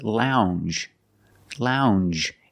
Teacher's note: it makes the regular n n plus the J